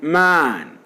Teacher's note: The front of the tongue is raised to a point just below half open position.